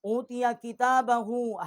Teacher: ہا کے اوپر الٹا پیش ہے، ایک الف جتنا اس کی آواز جو ہے وہ ہم نے بلند کی ہے